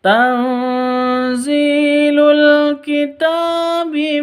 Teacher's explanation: Cara bacanya samar disertai dengung 2 ketuk karena bacaan ikhfa hakiki.